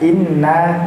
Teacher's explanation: Idgham dengung, dan ditahan sebanyak 2 harakat.